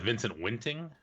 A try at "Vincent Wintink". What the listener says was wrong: Wintink with a K at the end. Wentink.